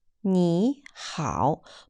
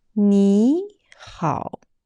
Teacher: When two third tones spelled together, the first third tone need to be changed to second tone, which would be 你 好. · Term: Tone Sandhi